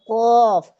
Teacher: जब हम जबान को पीछे से उठाते हैं कौफ के लिए हैवी करते हैं